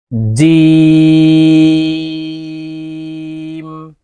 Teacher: আলিফ টান হবে এই যে এখানে সংখ্যায় চার লিখে দিয়েছি জিম জিম হরফ জিব্বার মধ্যখান থেকে উচ্চারণ করতে হবে